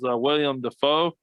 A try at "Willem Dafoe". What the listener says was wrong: It sounds like you're saying William Dafoe.